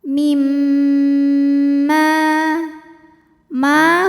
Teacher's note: ghunnah atau Nun e mim musyaddadah sebab ada mim yang bertasdid cara membacanya adalah didengungkan bunyi dengungannya tahan kurang lebih dua harakat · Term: ghunnah musyaddadah